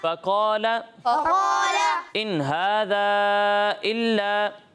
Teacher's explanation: यहाँ मद्दे मुनफसिल है, इसे 2 या 2.5 अलिफ के बराबर खींचेंगे